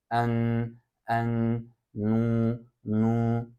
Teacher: bu sesi hem hem ağızdan hem burundan hava çıkması suretiyle söylenir en en nu nu Dikkat edersen sadece ağzımdan ne söylemiyorum aynı · ağızdan hem burundan hava çıkması suretiyle söylenir en en nu nu Dikkat edersen sadece ağzımdan ne söylemiyorum aynı zamanda burnumdan da çıkıyor hava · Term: Nazal